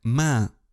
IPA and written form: mæ̃ (main)